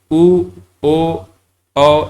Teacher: वृत्तमुखी में हम लोग देखेंगे तो हमारे जो होंठ है वो वृत्त का आकार ले लेगा, मतलब वहां पर गोल हो जाएगा ऐसे।